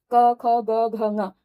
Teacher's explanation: तो पांचों ही वर्णों का उच्चारण स्थान भी कंठ ही होगा।